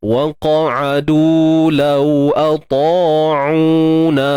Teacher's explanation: Untuk qaf ni kita tebalkan dia sebab huruf isti'la.